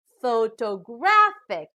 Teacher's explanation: now the third word also has four syllables but this time the stress is on the third syllable so we pronounce this as photographic